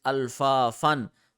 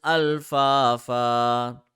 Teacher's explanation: we will remove one fatha from it and we will stretch that letter for 1 second. So in stopping mode, in regular mode, it is alpha fun, but in stopping mode, it is alpha fa.